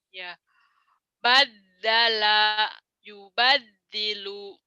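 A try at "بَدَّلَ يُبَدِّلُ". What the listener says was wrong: Pendek. Badala yubadilu. La-nya pendek, nggak ada yang panjang.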